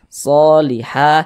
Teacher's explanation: Ini alif kecil nih, atau fathah berdiri. Ha dibaca panjang, mad tabi'i panjang 2 harokat.